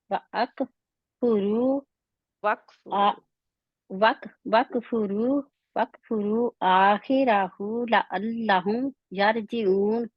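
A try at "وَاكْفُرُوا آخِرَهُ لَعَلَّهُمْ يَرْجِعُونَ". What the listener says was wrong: آپ آخری حروف کو لمبا کیوں کر رہے ہیں؟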